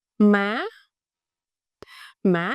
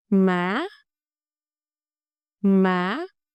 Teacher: the raising tone. The pitch go up quickly.